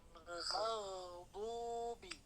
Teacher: Maghdu jangan ada jedanya. Maghdubi. Sambungkan suaranya. Karena dia rokhawah.